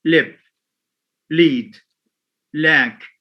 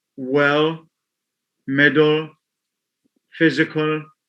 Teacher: Most Arab learners often produce or mispronounce well with a clear instead of a dark allophone. It has clear and dark. Clear as in lip, lead, lack. Dark when it occurs in words like well, middle, physical, etc. So that one, the second allophone is referred to as a dark allophone.